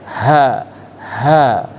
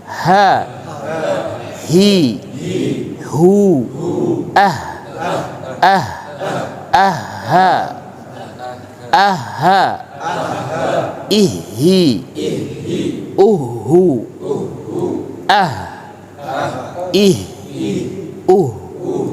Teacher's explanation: Nah, kalau H ini keluarnya dari tenggorokan paling bawah, di mana getarannya sampai di dada. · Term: Huruf H